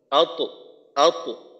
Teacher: তয়ের কলকলাটা মোটা করে করা আর বাতাস যেন বের না হয়